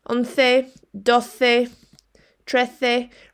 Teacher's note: Remember, you say that as a th sound, as if you were going to say the in English. So trece, not trece.